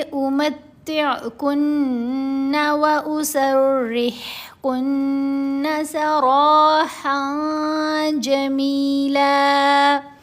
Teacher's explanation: آواز کو ناک میں پڑا جانا اور 2 حرکات کی مقدار اس کے اوپر ٹھہرنا جو ہے وہ غنہ کہلاتا ہے. · را کے اوپر زبر ہے، را کو موٹا پڑھنا ہے. را کے اوپر زبر ہو یا پیش ہو تو را کو موٹا پڑھتے ہیں، اگر را کے نیچے زیر آئے تو را کو باریک پڑھنا ہے.